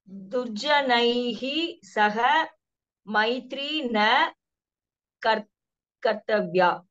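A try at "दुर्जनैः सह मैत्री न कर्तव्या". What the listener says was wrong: அவ்வளவுதான், very good.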